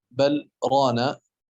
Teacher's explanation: ويستثنى منه السكت في بل رانا، لأن حفصا قرأ بالسكت والسكت يمنع الإدغام